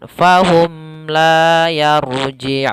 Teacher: Apabila ada mim mati bertemu la sama ketika bertemu dengan huruf yang lainnya, maka dia izhar syafawi. Mimnya harus jelas, tidak boleh ditahan.